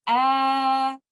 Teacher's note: in case of alif mud there is vibration of the vocal cord plus the opening of the mouth so we will say ah in case of letter yamad we